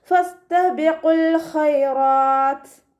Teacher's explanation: താക്ക് സുക്കൂനാവുന്ന സമയത്ത് കുറച്ച് എയർ പുറത്തോട്ട് പോണ സൗണ്ട് കൊടുത്തിട്ട് വേണം വഖഫ് ചെയ്യാൻ കേട്ടോ.